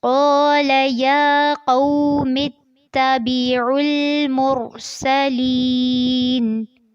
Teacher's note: یہاں پر یا ساکن سے پہلے زیر ہے تو اس کو لمبا کرنا ہے